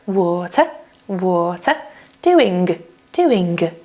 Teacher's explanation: So can you hear that the consonants are more aspirated